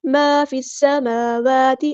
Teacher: ما فی السماوات، الف مدائیہ تو مد اصلی کریں گے. فا کو ہم نے سین کے ساتھ ملا دینا ہے. حمزۃ الوصل ماں ڈراپ ہو جائے گا. سین یہاں پر باریک پڑھیں گے، حروف صفیلیہ میں سے.